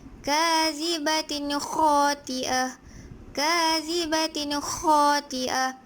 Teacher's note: apabila tanwin dua baris di bawah bertemu dengan huruf kha, maka ia dibaca jelas. Ia dibaca jelas.